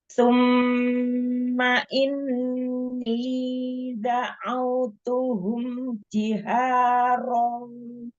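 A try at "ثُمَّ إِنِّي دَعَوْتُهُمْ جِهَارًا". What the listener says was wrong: Summa itu sempurnakan dhamma. Summa.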